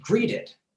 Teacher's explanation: a word like greeted where the ed is pronounced as id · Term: id sound